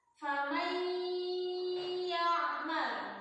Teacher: Ditahan 3 harokat. Masukin dulu ke pangkal hidung karena idgham bil guna ini makhrajnya ada di pangkal hidung al-khayshum.